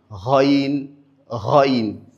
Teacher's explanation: Rin également est prononcé au niveau de la base de la langue. Elle fait partie des lettres qui sont dites les lettres emphatiques. · Elle fait partie des lettres qui sont dites les lettres emphatiques. Elle également est une lettre qui est lourde. · Ghaïn également est prononcée au niveau de la base de la langue.